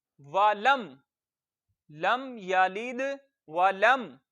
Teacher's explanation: मीम साकिन है, तो साकिन हर्फ अपने से पहले वाले जबर जेर पेश वाले हर्फ से मिलता है, तो लाम को हम मीम से मिला देंगे।